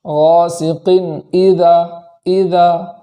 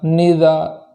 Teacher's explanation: اذا کے اندر حمزہ میں خوب جھٹکا کرنا ہے تاکہ حمزہ کی ذات کا اچھے سے پتہ چل سکے